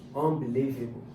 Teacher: Unbelievable. The stress is on the fourth. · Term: stressed syllable